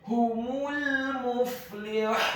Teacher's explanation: Kata humul muflihun, huruf ha-nya dibaca tafkhim tebal, dhamma 1 harokat. Huruf mim-nya dibaca dhammah, cukup 1 harokat saja karena setelahnya langsung disambung huruf lam yang sukun.